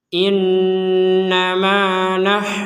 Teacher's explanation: kalau kita berhenti menjadi huruf terakhir yang kita berhenti maka huruf Ta ini menjadi huruf ha